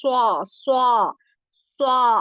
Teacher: एक तो ये कि स्वा हैवी लेटर है, आपका मुंह थोड़ा सा गोल होगा, स्वा स्वा स्वा, आपकी जुबान जो है ना वो प्रॉपर नीचे टच हो रही है, मुंह गोल हो रहा है।